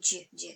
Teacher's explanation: Дж он образуется чуть-чуть поближе к губам.